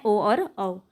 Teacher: कंठ और ओष्ठ से मिलके कौन सा बना है ओ और औ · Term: कंठ उष्ट